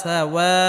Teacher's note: জবরের বাম পাশে খালি আলিফ মাদের হরফের উপর মোটা চিহ্ন আসার কারণে 4 আলিফ পরিমাণ লম্বা করে টেনে পড়তে হবে।